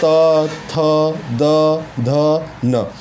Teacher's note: इनका जो उच्चारण स्थान है दंत्य है